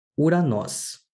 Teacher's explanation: este ditongo em particular se pronuncia como U e não OU. Mas, por ser formado por duas vogais, sempre que começar por ditongo, o espírito vai recair na segunda vogal.